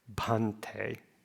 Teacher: It's just a very slight puff of air that comes out when you see that H. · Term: aspiration